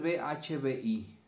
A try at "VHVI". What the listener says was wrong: aquí le decimos claro, es que allí vosotros la V la pronunciáis como B. VHVI es